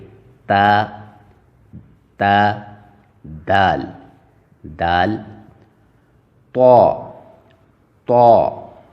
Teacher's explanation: مخرج نمبر 10 تا دال طا، ادا ہوتے ہیں زبان کی نوک اور اوپر کے سامنے والے 2 دانتوں کی جڑ سے، یعنی زبان کی نوک کو اوپر کے جو 2 دانت ہیں ان کی جڑ کے ساتھ ٹچ کر کے ادا کرنا پڑتا ہے، تا تا دال دال طا طا۔